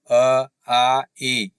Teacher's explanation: इसका मतलब ये हुआ कि निरनासिक मौखिक स्वर है जिन स्वरों के उच्चारण में हवा केवल मुख से निकल रही है, इसमें नाक से नहीं निकल रही है।